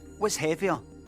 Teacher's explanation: So in the word heavier, the word ends with a pharyngealised central vowel